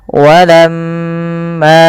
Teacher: Apabila ada mim berharakat tasydid, maka ia kita namakan dengan bacaan ghunah. Cara membacanya adalah ditahan suara mnya sepanjang dua harakat. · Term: gunnah